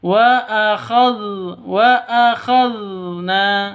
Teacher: Zal lidahnya menyentuh gigi seri atas. Wa akhadna, ujung gigi.